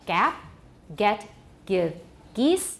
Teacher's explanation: stops become more front before more front vowels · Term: velar stops